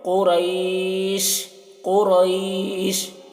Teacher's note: قوف کی آواز موٹی ہوگی، را کو پر پڑھیں گے